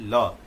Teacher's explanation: ल दंत मूल से, दांत के मसूढ़ा से बोलते हैं। लेकिन इसमें पार्श्विक है, हवा जीभ के बगल से निकल जाते, ल है ना, हवा जीभ के बगल से निकल जाती है, ल, कहीं दिक्कत नहीं होगी।